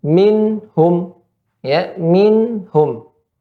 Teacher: ada pada nun tersebut sifat gunnah, tapi gunnahnya tidak dipanjangkan karena ya nun tersebut hanya berharakat sukun